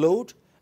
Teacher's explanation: it is voiced because air passes laterally. And literally means sides of the tongue. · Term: voiced lateral continuant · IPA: /l/